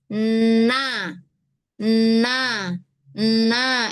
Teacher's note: Tempat ketemunya kan di gusi ya. Di gusi atas tuh.